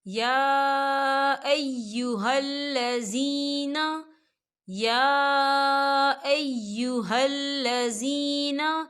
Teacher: یا کے پر کھڑی حرکات ہے اور اس پر مد بھی ہے، تو ہم اسے 4 حرکت کی برابر کھینچ کے پڑھیں گے۔